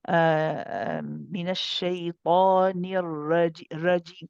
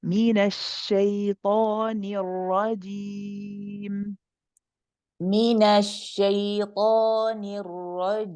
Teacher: As you say the ra, when the tongue comes down, let it come down all the way, then bring the middle of the tongue up for the jim. Okay, so finish the ra completely first.